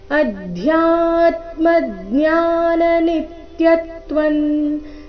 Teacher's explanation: ಚರಣ ಮತ್ತೊಮ್ಮೆ ಅಧ್ಯಾತ್ಮ ಇಲ್ಲಿ ಧ್ಯಾ ದ ಅಧಿಕ ಯ ಸಂಯುಕ್ತಕ್ಷರ ಅಧ್ಯ ಬೇಡ ಅಧ್ಯ ಮಹಾಪ್ರಾಣ ಸ್ಪಷ್ಟವಾಗಿ ಬರಬೇಕು